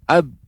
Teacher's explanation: Maka ba, huruf ba itu makhrajnya kedua bibir.